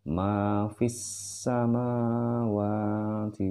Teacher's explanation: Alif lam syamsiah di mana sinnya di sini bertasjid, maka dia harus fis sama fis, jadi langsung melebur ya, fa, fi-nya melebur ke dalam sin di sini yang bertasjid